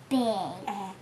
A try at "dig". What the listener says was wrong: Dig. Not big, he can dig. Dig. that's a D. and d, dig.